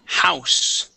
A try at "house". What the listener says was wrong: Yeah, so we want to pronounce that H there.